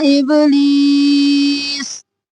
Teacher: با قلقلہ، لی یا مدہ ہے، کھینچیں گے